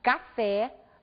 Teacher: na palavra café nós observamos a pronúncia aberta da última vogal